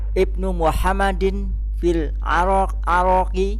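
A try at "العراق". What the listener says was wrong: Ada kota namanya Irak. Irak. Tidak ada Arak. Irak ada. Nah, Irak. Nah, Irak ini. Nah, Irak.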